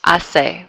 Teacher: notice how we don't pronounce the H? Hace. We're just dropping that H sound.